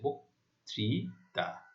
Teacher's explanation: আদ্য অ এর পরে রিকারে দেখতে পাচ্ছি, তাহলে আদ্য অ এর পর যদি রিকার থাকে, তাহলে আদ্য অ এর উচ্চারণ ও এর মতো হয়েছে, বক্তৃতা।